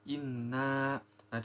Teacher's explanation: karena berharakat tasydid maka dibaca dengung panjang dua harakat